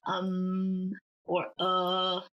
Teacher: most of the time it remains at the lowest range of your pitch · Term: third tone